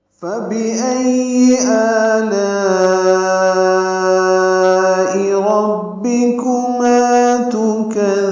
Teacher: لا میں الف مدہ کے بعد حمزہ آنے کی وجہ سے مد متصل ہے، ہم اس کو 4 حرکات سے زیادہ لمبا کرتے ہیں